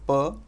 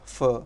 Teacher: where there is the voiceless voiceless stop in sanskrit greek and latin per you actually have the fricative in english fur